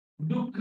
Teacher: तुम्ही श्वास बाहेर सोडता आणि मग खचा उच्चार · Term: विसर्ग